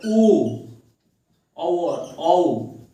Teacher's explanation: कंठ ओष्ठ, यानी कंठ ओष्ठ से बोला जाता है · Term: कंठोष्ठ स्वर